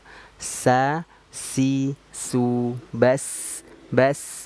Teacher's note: Masuk ke sifat hams. Nah, berarti dia mengeluarkan nafas.